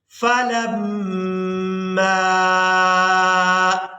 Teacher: میم مشدد اور نون مشدد پر ہمیشہ ہی غنہ کے ساتھ ادائیگی کی جاتی ہے، اور یہاں پر ہم نے میم کو الف مدہ کی وجہ سے کھینچ کر ادا کرنا ہے